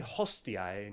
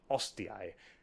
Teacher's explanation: Looks like the Pompeii bros weren't the only ones dropping their H's.